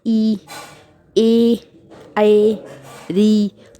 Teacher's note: इसमें आपका मुंह गोल ना होके बल्कि फैलता है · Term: अव्रतमुखी स्वर